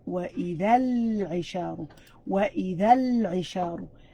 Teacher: Al-isharu indicated that L sound is a clear sound in where you have to read it with a clear L sound in where وَإِذَا الْعِشَارُ وَإِذَا الْعِشَارُ.